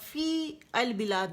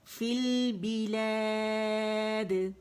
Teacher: یہ حمزۃ الوصل جو ہے یہ گر جائے گا اور یہ یا بھی گر جائے گی, اور اس سے پہلے جو زیر ہے نا فا کے نیچے وہ لام کے ساتھ جڑ جائے گی.